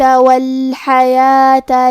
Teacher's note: کلمت الحیات میں حرف الحاء کی ادائیگی حلق کے درمیان والی حصے سے ہے